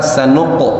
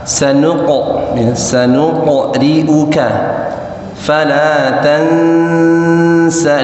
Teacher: usahakan dibiasakan untuk memantulkan huruf qaf ke atas